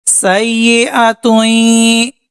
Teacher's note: یہاں پر ادغام غنہ کریں گے، ایک الف کے برابر ناک میں غنہ کریں گے